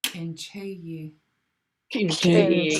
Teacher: This K is pinched, so it should sound pretty sharp.